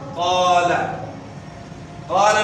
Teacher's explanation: قال میں آپ دیکھ رہے ہیں کہ الف سے پہلے زبر ہے اور زبر کی آواز کو ہم نے کھینچا، تو یہ کھینچنا ہے، یہ جو کھینچنا ہے یہی جو ہے نا الف کی آواز ہے.